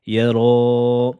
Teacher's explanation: Et la lettre ra emphatique. Et il faudra bien faire la voyelle de prolongation en deux temps. Mais elle est emphatique. Ne dites pas yara, mais c'est yara.